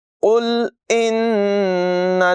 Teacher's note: نون مشدد میں غنہ کریں گے